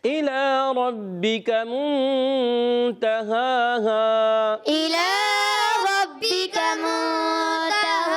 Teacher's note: تا پر زبر ہے، نہیں کھینچنا، ہا پر کھڑا زبر ہے، پھر دوسرا ہا الف زبر ہا، یعنی کھڑا زبر اور ہا الف زبر ہا دونوں ایک ہی ہیں، یہ سمجھ لیں۔ کھڑی حرکات حروف مدعی کے تو قائم مقام ہوتی ہیں، تو دونوں کا ایک ایک الف کھینچنا ہے۔